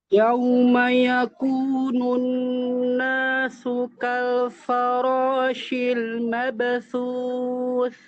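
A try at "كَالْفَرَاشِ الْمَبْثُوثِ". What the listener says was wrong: Fa-nya jangan sampai jadi tebal. Kal fara, enggak. Kal fa, kal fara.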